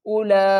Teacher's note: حمزہ پیش او، لام مد کھڑا زبر لا، 5 الف کی مقدار کھینچ کر پڑھیں گے